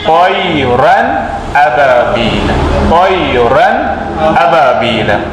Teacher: نون کی آواز کو بغیر گنہ ظاہر کر کے پڑھیں گے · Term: اظہار حلقی